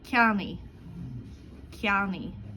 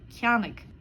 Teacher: Verbs that end in a-igh or igh will sound like e.